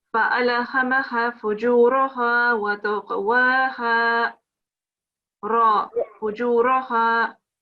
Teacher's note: a dhamma on a ra, you would pronounce it with a rounding sound. It's not a proper round sound, but you give a full mouth to it.